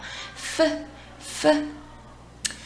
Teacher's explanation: 얘는 F 이번에는 우리 앞에 있는 이빨 2개, 앞니 2개가 아랫입술 앞부분에 살짝 닿았다가 가볍게 떨어질게요.